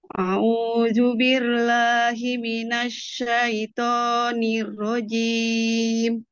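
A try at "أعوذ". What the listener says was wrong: Zazizu, jangan ju. Ze a'uzu.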